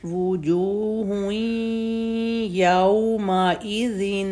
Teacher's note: تو ہن جو تنوین ہے اس کی ساؤنڈ یا کے اندر مرج ہو جائے گی ، وجوہن، ہن سے بن جائے گا ہوئیں، وجوہ یومئذ، یومئی